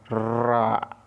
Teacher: रा जो है एक प्रकंपित व्यंजन है, रा, इसके उच्चारण में कंपन होता है